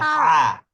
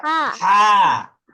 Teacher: এই হা কিন্তু উচ্চারণ হবে একটু কণ্ঠনালী থেকে। কণ্ঠনালী থেকে হা উচ্চারণ হবে, ভিতর থেকে উচ্চারণ হবে হা হা।